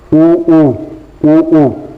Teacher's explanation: ओष्ठ से ऊ और ऊ का उच्चारण किया जाता है।